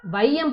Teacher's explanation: ஐகார சொல்லின் முதலில் வரும்பொழுது 2 மாத்திரை அளவிலிருந்து 1.5 மாத்திரை அளவாய் குறைக்கும். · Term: ஐகார குறுக்கம்